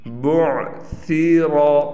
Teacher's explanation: را کو موٹا پڑھیں گے یعنی پر کر کے پڑھیں گے